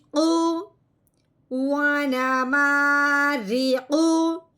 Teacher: پیش لگی ہوئی ہے۔ قوف کو ہم نے حلق کی گہرائی سے نکالنا ہے، وہ بھی جھٹکے کے ساتھ، پھر اس کے اوپر پیش پڑھ دیے ہیں۔